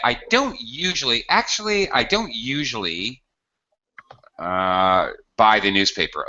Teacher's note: you hear the higher intonation and then going lower, because he's kind of introducing a negative point. He's using highs and lows in his voice effectively, actually.